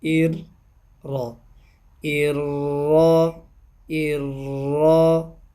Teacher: را کے اوپر جب زبر پڑھیں گے تو را کی آواز کو موٹا کریں گے